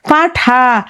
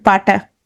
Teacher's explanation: ধরো খ, ঘ, এই মহাপ্রাণ থেকে কি হয়ে যাবে, অল্প প্রাণ, ধরো খ থেকে হয়ে গেল ক। হুম, পাঠা, ঠ হচ্ছে এখানে মহাপ্রাণ, ট হচ্ছে অল্প প্রাণ, পাটা।